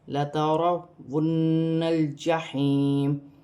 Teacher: یہاں پر یا مدہ بن رہی ہے، یا ساکن سے پہلے زیر ہے، قاف موٹی ہے، واو کی صورت میں زیر گر جائے گی، نون ساکن ہو جائے گی، اور نون مشدد میں غنہ کیا جائے گا